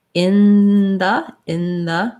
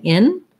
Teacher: So instead of the tip of my tongue lifting for the in, when I say in the tip of my tongue is down really close, either already in the position between my teeth or close so that it can slide in there very easily. And I'm making the in part with further back on my tongue lifting up and blocking the air. So the N sound, I have to fully block the air for it to sound like an N.